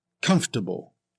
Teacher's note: The spelling suggests 4 syllables, but it's usually pronounced with 3 syllables in both British and American English.